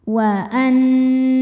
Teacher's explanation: Sebab ada ha damir yang diapit dua huruf yang hidup dan setelahnya huruf hidupnya hamzah a. Cara bacanya dipanjangkan h-nya empat atau lima harakat. · Nunnya hukumnya adalah gunnah musyaddadah karena nun bertasydid. Cara membacanya berdengung, tahan dengungannya kurang lebih 2 harokat. Wa annahu. Hu hukumnya adalah mad silah tawilah sebab ada ha dhamir yang diapit 2 huruf yang hidup dan setelahnya huruf hidupnya hamzah a. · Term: mad silah thwilah